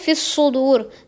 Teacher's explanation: آیت نمبر 10 میں صاد ہے، صاد کو آپ نے موٹا کر کے اچھے سے پڑھنا ہے. صاد کی سیٹی بھی موٹی ہوتی ہے